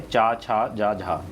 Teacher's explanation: चा वर्ग का उच्चारण स्थान किससे होता है? तालु से। तो तालव्य व्यंजन आपका यही है, चा, छा, जा, झा।